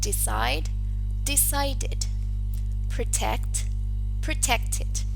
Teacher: Well, the first one, if the stem ends in the voiceless alveolar plosive t or in the voiced alveolar plosive d, an extra syllable has to be added, which is id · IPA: /ɪd/